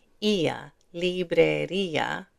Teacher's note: there's an accent mark on that i, so we separate these two sounds